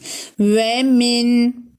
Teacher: dudaklarımızı öne doğru toplayıp ince bir şekilde çıkarıyoruz